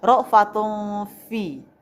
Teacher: tanwin ketemu dengan huruf fa dibaca samar-samar. Maka hukum tajwidnya adalah ikhfa hakiki.